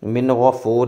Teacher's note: نون ساکن کے بعد حروف حلقی میں سے غین آ گیا، یہاں پہ اظہار ہوگا یعنی غنہ نہیں کریں گے